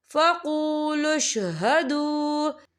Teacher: یہ دیکھیں فقولوا اشہدوا، یہاں پہ واو مدہ ہو رہا ہے، واو ساکن ہے، واو ساکن سے پہلے پیش ہے، تو ہم اسے 2 یا 3 حرکت کے برابر کھینچ کے پڑھیں گے